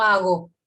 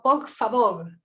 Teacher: Entonces está articulando una velar aproximante sonora, como hago. Es la misma que en hago, por un momento.